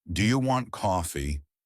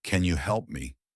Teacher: Your voice should rise at the end. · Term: good inonation